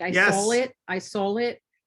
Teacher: we add an L at the end of a AW sound.